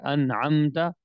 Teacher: میم ساکن کو ظاہر کر کے بغیر غنے کے جلدی سے پڑھیں گے، بغیر غنے کے جلدی سے پڑھیں گے، ٹھیک ہے۔ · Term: اظہار